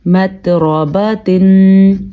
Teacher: را پر ہونے کی وجہ سے اس کو ہم پر پڑھیں گے کیونکہ را کے اوپر زبر ہے۔ باقی تا پہ کوشش کیجیے گا کہ جھٹکا پیدا نہ ہو، کیونکہ تا حروف قلقلہ میں سے نہیں ہے